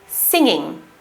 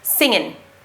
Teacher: the received pronunciation accent pronounces the ng with our tongue raised at the back of our mouths, ing, whilst the West Country accent just pronounces it as in, not ing.